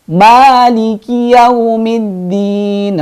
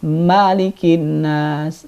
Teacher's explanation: ma-nya panjang, bukan seperti surat An-Nas.